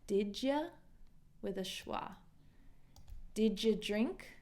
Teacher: if we link this did to you, sometimes this did you will change to a did ya, did ya with a schwa.